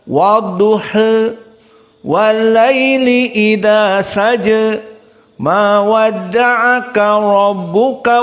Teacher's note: diturunkan juga dengan lafaz taklil condong sedikit